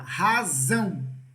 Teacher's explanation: A sílaba mais forte é a última. Então, eu digo que essa palavra aqui é uma palavra oxítona.